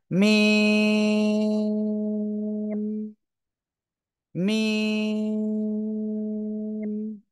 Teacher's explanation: এই মিম অক্ষরটা উচ্চারণ হবে দুই ঠোঁট এর শুকনো জায়গা, অর্থাৎ বাইরে থেকে